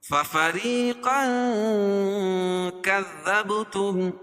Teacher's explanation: تنوین کے بعد حروف اخفاء کے 15 حرفوں میں سے کاف ہے تو یہاں ناک میں آواز کو چھپا کر پڑھیں گے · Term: اخفاء حقیقی